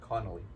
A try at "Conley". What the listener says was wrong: It's Conley. It's like you're saying like Connelly, like like I thought you were saying it like, but it's like Conley.